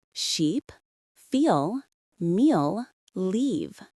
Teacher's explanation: Notice how your tongue is high and forward in your mouth. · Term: long vowels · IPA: iː